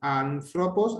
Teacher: el acento agudo igual al nuestro que indica una elevación de tono aproximadamente en una quinta de la vocal que lo lleva